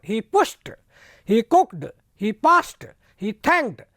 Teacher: तो डे के स्थान पर टे हो गया